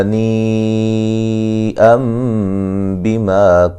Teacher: نون تنوین کا اقلاب ہے، نون کو میم سے بدل دیں گے، ٹھیک ہے، نون تنوین کی جو دوسرا نون ہے اس کو میم سے بدل کے پڑھیں گے۔